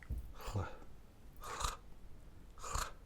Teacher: It's actually a lateral fricative.